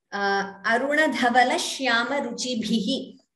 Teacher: I know you chanted the Mahaprana. If it is slightly clearer, that bha, it would be even better.